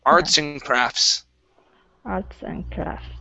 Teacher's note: with this word, you do not have to pronounce that T.